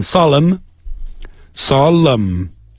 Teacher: You don't pronounce the N.